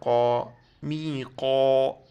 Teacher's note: قاف کو موٹا پڑھیں گے، یہ نقطے والا قاف ہے